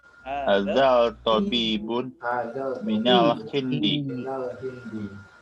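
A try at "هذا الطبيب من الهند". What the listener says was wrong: Lamnya nggak dibaca lamnya. Hadzal minal hindi ya, karena dia alif lam syamsiyah. Jadi hadzal tabib.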